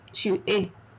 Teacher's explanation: Look at the pronunciation of es. I do not say s. I say e. Tu es. est is not est, but e.